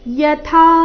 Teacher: ಯಥಾ ಥ ಮಹಾಪ್ರಾಣ ದೀರ್ಘ